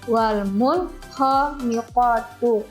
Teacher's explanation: Jadi nun sukun dan kha-nya dibaca jelas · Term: izhar